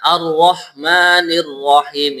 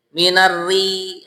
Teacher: ro yang berharokat kasroh di sini dibaca tipis. Caranya bibirnya itu diposisikan seperti senyum. Minari gitu.